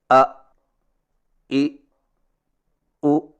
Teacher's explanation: ادائیگی میں سانس اور آواز دونوں بند ہو جاتے ہیں، اس لیے ادائیگی کے وقت سینہ پر دباؤ ہوتا ہے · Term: حمزہ